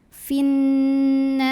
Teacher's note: Maka cara membunyikannya adalah dipanjangkan haknya 2 harokat. Finnahari, ra-nya dibunyikan secara tarqiq karena ra barisnya di bawah kasrah. Maka bacanya tipis, lidah datar.